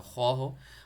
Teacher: وہ یہ کہ آپ کا اپنے منہ کا او شیپ میں آپ نے کرنا ہے. او شیپ میں جب اپنے منہ کو کرو گے، اس میں پڑھو گے تو وہ خو موٹا پڑھا جائے گا